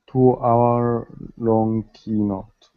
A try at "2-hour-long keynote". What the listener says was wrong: Much better, excellent.